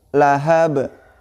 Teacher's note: Nah, di ujungnya di situ bertemu dengan huruf ba ya, di ujung kalimatnya, maka dihukumi qalqalah huruf ba-nya, maka dibaca memantul